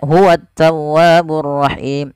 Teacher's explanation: Pada lafal at-tawwab dan ar-rahim keduanya ada alif lam, dan alif lam di sini kita namakan dengan alif lam syamsiyah, yaitu alif lam yang diidghamkan dan dimasukkan ke huruf setelahnya dan dia tidak dibaca